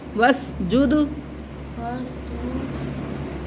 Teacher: واس نہیں ہے, الف کو نہیں پڑھیں گے, واو کے سین سے فوراً جلدی ملا دیں گے.